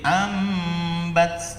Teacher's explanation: suara mim terdengar samar karena dua bibir tidak merapat sempurna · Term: iqlab